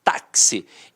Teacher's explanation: esse x aqui ó tem um som de KS Então apesar de termos de quatro letras nós temos cinco fonemas